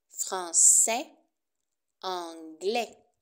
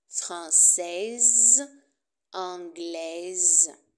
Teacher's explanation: Attention à la prononciation du masculin. Au masculin, on ne prononce pas le S.